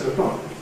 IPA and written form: ˈtʊəˈklɒk (2 o’clock)